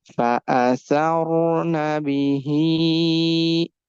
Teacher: We are making ha sound longer because after kasra ya is coming.